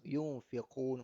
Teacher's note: nun mati bertemu fa ikhfa dua harakat